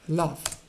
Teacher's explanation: You would find a light L in the word love